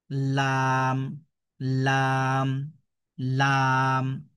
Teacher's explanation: লাম, জিহ্বার আগাটা উপরের তালুর সাথে লাগিয়ে পড়তে হবে। লাম, এইভাবে লাম। · তো লাম অক্ষরটা সাধারণত জিহবার আগার কিনারা সামনের উপরের দাঁতের মারির সাথে লাগিয়ে পড়তে হয়। লাম মানে আমাদের জিহবার আগাটা মানে আগার কিনারাটা আমাদের উপরের তালুর সাথে লাগবে। দেখুন লাম লাম লাম জিহবার আগাটা উপরের তালুর সাথে লাগিয়ে পড়তে হবে।